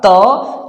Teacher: जैसे हमने कहा त, थ, द, ध, न, त, थ, जैसे बोल के देखिए आप, त, जब हम त बोलते हैं तो हमारा जुबान ऊपर वाले दांत में टच करता है